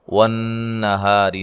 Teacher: والنہاری، نون مشدد پہ غنہ ضروری ہے، ہا الف مدہ ہے، را کو باریک پڑھنا، را کے نیچے زیر اور را کو باریک پڑھا جاتا ہے